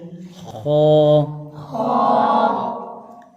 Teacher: خو حروف مستعلیہ میں سے ہے تو اس کو موٹا پڑھیں گے